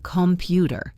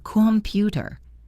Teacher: The O becomes a schwa. When you are listening to a fast conversation, you need to listen for the stressed syllables